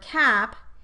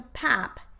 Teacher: a target phoneme without the labial feature changes place of articulation and becomes a labial phoneme , either bilabial or labiodental, to match a nearby labial consonant · it would be an example of anticipatory or regressive assimilation because the k phoneme became more like a phoneme that occurred later in the word, the bilabial p phoneme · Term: labial assimilation